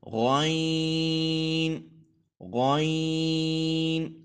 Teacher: حلق کے سب سے اوپر جو حصہ ہے ادھر سے ادا ہوگا